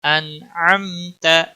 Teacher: نون ساکن پر اظہار ہوگا، اخفا نہیں کرنا ہے، اظہار ہوگا کیونکہ حروف حلقی کا حرف آگے آ رہا ہے